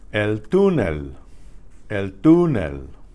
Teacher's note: You hear that oo, which is accented there. It's stressed. It has an accent over the U.